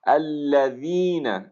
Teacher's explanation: ذال کا خیال کریں گے کہ آپ کا دانت آپ کے دانتوں سے باہر آپ کی زبان جا رہی ہے